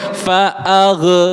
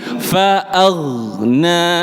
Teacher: huruf ghain tidak boleh memantul. Tidak boleh fa'agh, tapi fa'aghna.